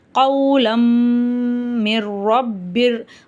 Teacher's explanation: தன்வீனுக்கு அப்புறம் மீம் வருது இந்த இடத்துல நம்ம குன்னா செஞ்சு ஓதணும் · இங்கே தன்வீனுக்கு அப்புறம் மீம் வருது, இந்த இடத்துல நம்ம குன்னா செஞ்சு ஊதணும். கௌலம் மிர் ரப்பிர், ரப்பிரில் ரா மேலே ஜபர் இருக்குது, நம்ம வந்து ராவை வல்லினமாக ஊதணும்.